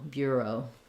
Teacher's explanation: English and we use that as a diphthong o Bureau so the stress is on the first syllable beer it's going to be long and the second the second syllable o is going to be a little shorter be careful not to be too short though because it is